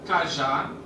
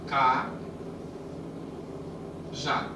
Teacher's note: E você identifica aqui que essa palavrinha, a sílaba tônica, é a última sílaba. Essa é uma palavra de 2 sílabas e a última sílaba é a sílaba tônica.